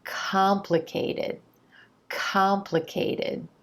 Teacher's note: It's that contrast between the emphasized ah as in olive sound in that stressed syllable and the other quicker unstressed syllables that are going to give you that more natural rhythm that you're looking to achieve.